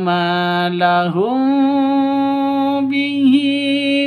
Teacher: Mim mati bertemu dengan ba, samar didengungkan ya karena bacaan ikhfa safawi dengung